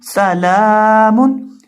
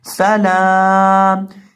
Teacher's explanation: لام کو یہاں ایک الف کے برابر کھینچا جائے گا اور وقف کرتے وقت میم کو ساکن کر دیا جائے گا.